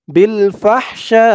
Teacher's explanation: ফাহ বিল ফাহুরুম বিল ফাহ শা এখানে চার আলিফ টান হবে শা বলে চার আলিফ টান দিয়ে এই হামজাকে ধরবে হামজার নিচে জেরটা সাকিন হয়ে যাবে বিল ফাহশা এই চার আলিফ টানের নাম মধ্যে মুত্তাসিল উপরে আমরা